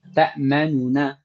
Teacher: Wa kaifiyatuhu, caranya an tantiqa bin nunil ula madmumatan mudharah. Caranya kita ucapkan nun pertama tapi diizharkan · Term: ikhtilas